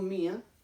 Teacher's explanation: Cuando digo mía, tengo la i y la a. Se ha separado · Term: hiato acentual